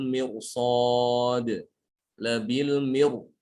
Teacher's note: itu ra-nya dibaca tebal.